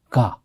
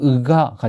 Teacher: 처음에 먼저 소리가 거의 나지 않는 상태로 해서 으라고 하는 요거를 목에서 소리를 냅니다. 그리고 그 다음에 동시에 가를 발음하는 식으로.